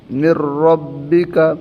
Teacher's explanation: لام اور را کی صورت میں بغیر غنہ کے ملا کر پڑھیں گے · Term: ادغام بلا غنہ